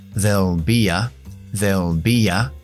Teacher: Entre be y a, pongo una ya, porque estoy uniendo con lo que se llama una consonante de intrusión